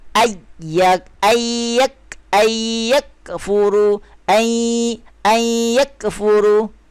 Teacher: Okey, dia kena masuk. Tak bunyi nun, dia terus masuk ke ya. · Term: ma'al gunnah